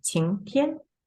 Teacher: 晴 going up, second tone